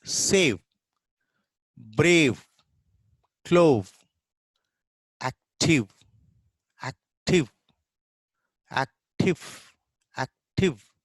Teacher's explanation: there is a friction of va sound